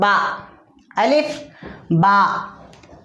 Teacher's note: दोनों होठ मिलकर बा अदा होता है, ज़्यादा खींचना नहीं